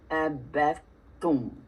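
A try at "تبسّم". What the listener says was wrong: You're still giving me a sa. I need ta. No ab. bat. Tum. Tum. Say shadda. Abesum. The rhythm of the word shadda is letting you know how all shaddas should sound. So if you ever try to figure out a shadda, say it.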